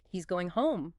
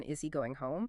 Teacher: We do think about how your pitch falls at the end of a statement like he's going home but it rises for a yes no question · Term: intonation